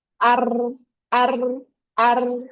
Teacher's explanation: ro versi Indonesia, itu tepi ujung lidah bagian punggungnya tadi, rapat semua ke gusi. Tidak ada celah kecil atau fajwa. Sehingga getaran yang dihasilkan banyak atau kasar.